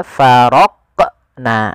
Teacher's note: ada menambahkan hamzah setelah huruf qaf itu menjadi faraqna. Harusnya langsung saja faraqna, faraqna, ya, mengalir dia huruf qafnya sesuai dengan makhrajnya.